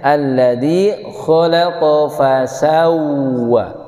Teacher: Maka posisinya ketika baca huruf waw ini harus mengumpul bibirnya, harus manyun. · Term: wawu tasdid